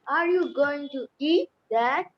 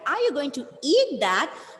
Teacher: when the stress on the word eat came, the meaning changed